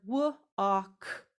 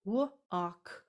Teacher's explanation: Here are 3 sounds, w-ak, in that. So I have the W making the w sound. The A is making that ah sound, and the K is making the k sound.